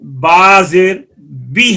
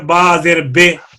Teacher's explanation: جب کسرے میں کامل انخفاض نہیں ہوگا تو وہ پھر ای کی بجائے اے ہو جائے گا. ایسا ہی کسرہ میں اگر کامل انخفاض نہ ہوا تو مشابہ فتح نہیں ہوگا، کسرہ اور فتح کے درمیان ہو جائے گا، آ اور ای کے درمیان اے. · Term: کسرہ مجہول